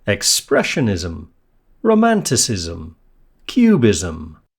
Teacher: Pronunciation-wise, ism has a syllabic consonant m at the end.